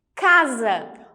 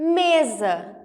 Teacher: de z então independente independentemente da palavra ser acentuada ou não se o s está no meio de duas vogais ele vai sim assumir o som do Z